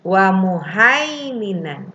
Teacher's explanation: ada ya mati sebelumnya berharokat fathah Jadi dibacanya lembut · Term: madlin